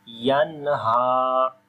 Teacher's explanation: After the noon sakin, the next letter is throttle letter. We make izhar sound here, like the clear sound of noon. So we say yanha without ghunna.